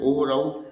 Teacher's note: ओ औ ये होते हैं कंठ प्लस ओष्ठ से · ये होते हैं कंठ प्लस ओष्ठ से, इसलिए इस ध्वनि को बोलते हैं कंठोष्ठ्य।